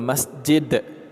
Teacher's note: Kalau kita berhenti di sini, huruf dal tersebut menjadi qalqalah kubra.